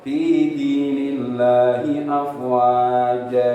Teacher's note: lafaz Allah kalau didahului dengan harakat kasrah maka tetap tipis